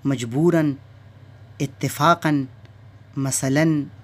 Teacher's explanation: کسی لفظ کا آخری حرف نون نہ ہونے کے باوجود نون کی آواز دے تو اس پر تنوین کی علامت لگاتے ہیں، جیسے مجبوراً، اتفاقاً، مثلاً وغیرہ۔